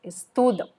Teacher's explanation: can you hear how the stress is in the middle